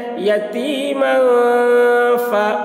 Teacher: یتیمن فا، اب یہاں پر تنوین کے بعد حروف اخفا میں سے فا آ رہا ہے، اس لیے تنوین کی آواز کو ناک میں چھپا کر پڑھیں گے، اس کو اخفا کہتے ہیں۔